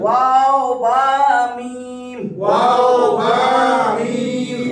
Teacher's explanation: দুই ঠোঁট হইতে উচ্চারিত হয়